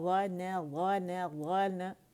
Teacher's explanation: تو یہ فیل کریں، جب ادائیگی بھی کریں گے نا، غن، غن، غن، ٹھیک ہے۔ یعنی مخرج کو پکڑیں گے موٹے والے کو، جب نون پہ آئیں گے تو اس کو باریکی ظاہر کریں گے کیونکہ نون باریک ہے